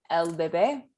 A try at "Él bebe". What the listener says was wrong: So why you're throwing L in there?